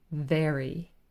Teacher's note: the cross-section it's not both lips or both sets of teeth it's quite specifically the lower lip and the upper teeth